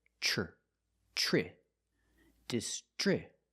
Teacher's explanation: Then we have the TR together. The TR makes the ch sound like chicken, plus the the R sound together, tr, tri, distri.